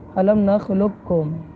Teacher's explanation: کاف کا مخرج قریب ہے، تو اس وجہ سے یہاں پر ہم قاف جو پہلا حرف ہے اس کو ہم بالکل بھی باقی نہیں رکھیں گے ، بلکہ لام کو ڈائریکٹ ہم کاف سے ملائیں گے، علم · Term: ادغام متقاربین تام